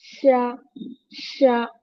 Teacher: the middle of the tongue is close to touching the plate और roof of the mouth